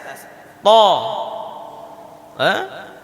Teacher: Ujung lidah kita berjumpa dengan pangkal tumbuh gigi seri atas. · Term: huruf ta